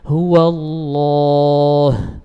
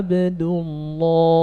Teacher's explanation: ketika membaca lam pada lafzul jalalah, punggung lidahnya ini naik atau dikenal dengan tafkhim, diberikan sifat isti'la